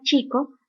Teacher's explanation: Para su articulación, el predorso de la lengua forma primero una oclusión con la zona postalveolar o la zona prepalatal y seguidamente se da la constricción. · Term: fonema africado